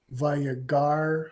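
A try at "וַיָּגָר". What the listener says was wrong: Yeah, this is tricky again, because the second one is a Kamesh Chatuv. Vayagor.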